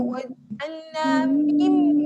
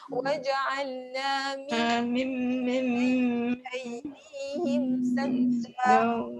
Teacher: Jadi dekat sini iklab maksudnya tukar daripada bunyi nun kepada bunyi mim. Jadi kat sini terus rapatkan bibir. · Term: mim iklab